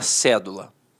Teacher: a palavra cédula notoriamente é uma proparoxítona a sílaba tônica está na antepenúltima sílaba